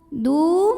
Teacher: Karena ada waw sukun yang sebelumnya baris dhammah, maka huruf dal panjangkan 2 harokat. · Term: mad tabi'i zahiri